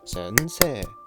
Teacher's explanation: Four kana, four even mora. The pitch pattern: low–high–high–low